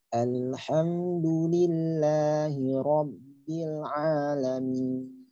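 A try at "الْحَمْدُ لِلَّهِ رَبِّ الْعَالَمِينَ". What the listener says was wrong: Ba itu juga punya sifat syiddah seperti huruf dal. Nah, kadang-kadang kalau syiddahnya tidak sempurna, ba bisa menjadi pe, profil. Nah, jadi pe, profil. Nah, ada yang masuknya b keluar p, kayak Malik Yaumiddin masuknya da keluar ta. Kalau ba, Robbi, masuknya ba keluar p. Robbi, Robbi, jangan. Sempurnakan syiddah ba sehingga ba itu keluar dengan huruf ba yang asli, bukan campuran. Ya, jadi alhamdulillahi rabbil alamin. Rabbil alamin. Rabbil alamin.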